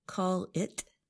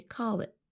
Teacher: we don't really pronounce the letter T at the end of the phrase. Instead of saying call it, we say call it with a held T.